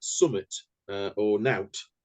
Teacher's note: what Yorkshire does is it chops out certain sounds, so something becomes summit, nothing becomes nout.